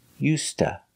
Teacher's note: The D is pronounced like a T, used, and to is pronounced ta. So together you hear used to.